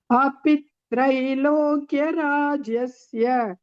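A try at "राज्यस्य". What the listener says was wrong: Rajyasya. Rajyasya. Rajyasya is there. There is a ya.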